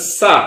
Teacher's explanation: കണ്ട് പൂർണമായിട്ട് തടയാതെ പുറത്തേക്ക് ശബ്ദത്തെ കാറ്റിനെ ഒഴുക്കി വിടുന്ന ശബ്ദം കണ്ട് അപ്പൊ സ എന്ന് പറയുന്ന ശബ്ദം കാറ്റിനെ ഒഴുക്കി വിടുകയാണ് ചെയ്യുന്നത് പൂർണമായി തടയുന്നില്ല